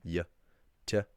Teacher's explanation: In Connacht, you get something like T with a very strong glide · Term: slender T